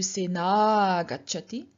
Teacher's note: with the a and a merging into one long a